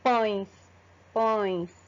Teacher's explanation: ele sai tanto pela boca quanto pelo nariz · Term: nasal